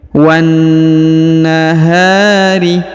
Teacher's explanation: Kemudian perhatikan huruf H dipanjangkan 2 harokat karena di depannya terdapat alif ya.